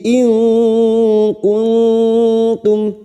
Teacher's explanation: Alaihi in kuntum, nun sukun bertemu kaf ikfa hakiki kita samarkan bunyi nun sukun dan mendengung selama 3 harokat